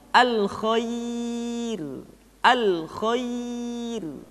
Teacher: Ya, termasuk yang berikutnya adalah ra dibaca dengan tipis ketika didahului oleh huruf ya yang sukun